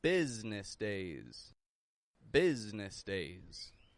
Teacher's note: Now, much like Wednesday, business is not spelled the way that it's pronounced. The S changes to a Z, and the I that's in the middle disappears altogether.